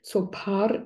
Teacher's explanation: means so it sounds funny the way I'm saying it because both of these syllables in tibetan language which is a tonal language is a low tone syllable